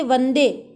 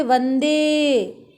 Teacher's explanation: प्लूत का तात्पर्य है किसी वर्ण को यदि बहुत लंबा खींचा जाए, जैसे कि वंदे, एक तो हम बोलते वंदे और एक हम बोल रहे वंदे। हमने दे को बहुत लंबा खींचा है, 3 गुना खींचा है